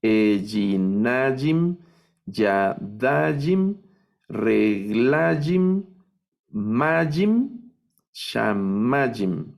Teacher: Entonces, estas son otras palabras milel, se acentúan en la penúltima sílaba.